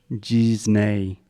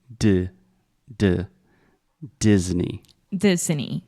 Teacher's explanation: this is a hard D at the beginning so there's no j or G